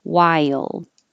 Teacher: moving to e i and then you're already very high so your tongue slides down and back up for the l